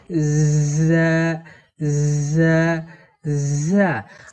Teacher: এই ঝা হরফকে জিহুবার আগা এবং সামনের নিচের দুই দাঁতের গোড়া একসঙ্গে লাগিয়ে এই ঝা হরফকে শীর্ষসহ পড়তে হয়